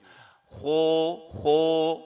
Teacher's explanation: kho ini huruf tebal, maka yang digunakan adalah rahang tebal. Rahang kita maju.